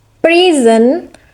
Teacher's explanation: The noun is present or a gift, and this is a stress on the first syllable.